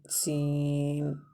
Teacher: سیٹی کی آواز آنی چاہیے سین میں